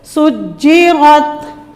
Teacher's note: ایک تو سین میں صاد کی آواز نہ آئے، دوسرا را کو موٹا کرنا ہے. را کو موٹا کرنے کے چکر میں اکثر تا بھی موٹی ہو جاتی ہے.